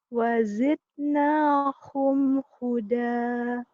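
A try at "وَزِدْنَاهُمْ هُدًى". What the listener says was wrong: Ini kol-kolahnya belum keluar. Gak ada kol-kolahnya ya, nggak apa-apa. Bukan pekerjaan sekarang ya, harus dilatih terus kol-kolahnya nanti. Di Iqra 4 nanti kita belajar.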